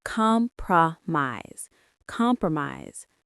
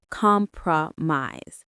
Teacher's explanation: Stress on the first syllable. The middle of the word pro is very short.